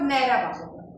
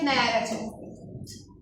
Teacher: Nərə balığında uzanmayacaq. Amma nərə çəkdir, orada uzanacaq. Amma ikisinin də vurğusu stabildir.